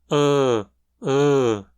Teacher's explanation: vogais médias centrais onde toda a língua é erguida até mais ou menos a metade da altura da boca